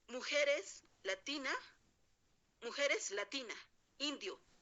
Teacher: este fonema, la S, se pierde, ya no se pronuncia cuando esté en final de palabra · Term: La elisión